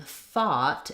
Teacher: in thought, it has the ah vowel. So there we have the TH sound, the ah, and the T sound.